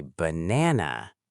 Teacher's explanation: The first A becomes schwa, ba. The middle A is stressed, na. The last A becomes schwa, na.